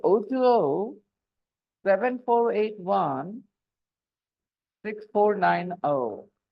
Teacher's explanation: after the second zero you take a little bit of a pause why to suggest that there is a gap so o20 7481